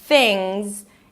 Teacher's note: Stick the tongue up for the th, relaxed I, thingz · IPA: ˈθɪŋz